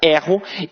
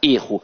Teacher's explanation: o verbo tem a pronúncia aberta, erro, e que o substantivo tem a pronúncia fechada, erro